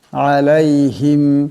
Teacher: এখানে আইন আছে আওয়াজটা গলা থেকে আনতে হবে আলাইহিম মিম সাকিন কিন্তু এই মিম সাকিনে গুন্না করা যাবে না